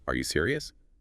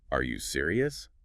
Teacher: It barely sounds like a question, but add that little upward flick at the end